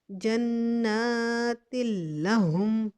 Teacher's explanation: تنوین کے بعد لام آ رہا ہے، شدید حالت میں ہے، لیکن ہم نے یہاں بغیر غنے کی ادغام کیا ہے